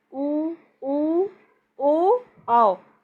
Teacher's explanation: जब इन चारों को बोलेंगे तो हमारे जो होंठ होते हैं वो गोल रूप धारण कर लेते हैं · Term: वृत्ताकार स्वर